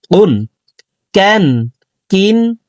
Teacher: কাফ হরফের উচ্চারণ জিহ্বার গোড়া থেকে একটু আগে বাড়াইয়া তার বরাবর উপরে তালের সঙ্গে লাগাইয়া উচ্চারণ করে পড়ব।